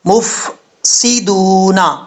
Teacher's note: سین سیٹی کے ساتھ پڑھا جائے گا، دال کے بعد واو ہے، واو کو 1 الف کی مقدار جو ہے وہ لمبا کر کے پڑھا جائے گا، مفسدون۔